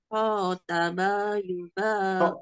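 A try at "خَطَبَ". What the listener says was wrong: Tok. Bukan tak tapi tok. Khotoba. Barusan terbaca tak.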